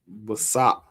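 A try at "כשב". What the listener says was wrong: That's a k.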